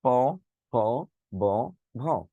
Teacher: এখন আসুন, দুই ঠোঁটের সংস্পর্শে যে বর্ণগুলো উচ্চারিত হয় তাকে বলে ওষ্ঠ বর্ণ। দুইটা ঠোঁট মিলাইতে হবে, দুইটা ঠোঁট না মিলিয়ে উচ্চারণ করা সম্ভব না।